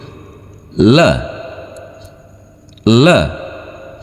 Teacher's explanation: Dan cara membacanya, kita pertemukan ujung lidah kita dengan langit-langit mulut. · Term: huruf lam